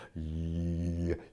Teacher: To do a pure consonant, like for example, a Y is almost impossible. As soon as you do y, you hear E is creeping into the sound.